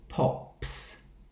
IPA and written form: pɒps (pops)